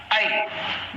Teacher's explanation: अब आई भी जब हम पढ़ेंगे तो क्या होगा, या आई में जब हम या पर पहुंच रहे हैं तो या पर हमारी जुबान कहीं लग नहीं रही है, बल्कि वो हवा से अदा हो रहे हैं, वो हर हवा के जरिए अदा हो रहा है, यानी मुंह के अंदर जो खाली जगह है उस जगह से वो अदा होता है।